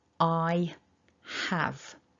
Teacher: So first off then, we've got the full form, I have. So we've got that double vowel for I, so you should feel some movement in the shape of the mouth. And then we've got the h, a short a, and a v, have, I have.